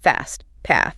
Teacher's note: And AME, that's usually a short, flat A sound.